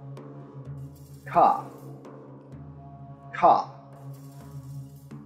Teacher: produced by obstructing airflow in the vocal tract with the back of the tongue at the soft palate without engaging the bullet without engaging the vocal cords cop cop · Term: voiceless velar plosive